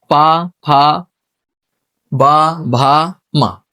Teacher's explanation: तो ये कहां से बोल रहे हैं, ओंठ से